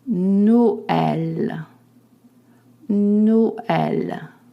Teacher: It signifies that the underlying E is pronounced just the same as accent grave, E. And you have to separate the pronunciation of the two vowels